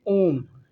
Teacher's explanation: प्लुत स्वर होता है, जिसमें 3 मात्रा लगती है या तिगुना समय लगता है।